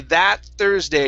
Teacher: combine uh to get rid of that t sound okay is we actually use what's called a stop T